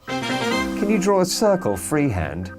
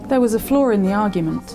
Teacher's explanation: Just remember the r sound is not very strong.